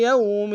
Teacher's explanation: یوم واو لین ہے بغیر کھینچے پڑیں گے